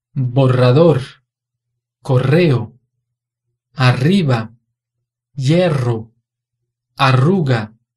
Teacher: E rueda significa roda. Se a palavra tiver dois R's juntos, a pronúncia é o mesmo som vibrante múltiplo.